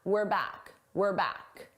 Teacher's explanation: Now notice how unstressed my pronunciation is. It sounds like were, not we're, were. This is how native speakers say it at a natural pace. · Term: contraction were